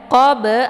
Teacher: jadi bnya dipantul dengan pantulan ringan